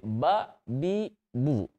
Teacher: Contoh untuk huruf ba, makhrajnya adalah di bibir, kedua bibir.